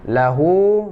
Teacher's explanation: Lahu ma tabi'i, panjang 2 harakat.